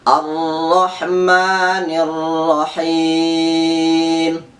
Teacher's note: Ketika bunyikan huruf Ar-Rahmanir-Rahim, ro-nya ada syidah, maka harus ketukannya, tekanannya itu satu alif, sama dengan mad asli.